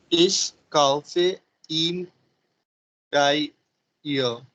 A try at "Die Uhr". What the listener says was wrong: Die. Die is English. In German? Die Uhr. H will go silent. Die Uhr.